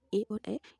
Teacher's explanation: ए, ऐ, कंठ और तालव्य, जिसमें कंठ और तालव्य दोनों का इस्तेमाल है उच्चारण करने में, उन्हें हम वो है ए और ऐ, इन्हें हम कंठ और तालु दोनों से उच्चारण करते हैं